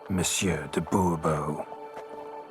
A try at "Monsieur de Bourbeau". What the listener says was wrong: The emphasis falls on the last syllable. Bourbeau?